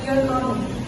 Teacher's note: Statement na siya since yung intonation mo is falling. Pero pag mataas, it shows excitement or questioning someone. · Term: falling tone